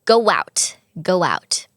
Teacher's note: โอโมีวแหวนอยู่ท้ายเสียงสระอยู่แล้วก็วแหวนมาเชื่อมต่อเลยค่ะ